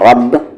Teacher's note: را ہیوی ہوگا کیونکہ اس پر زبر ہے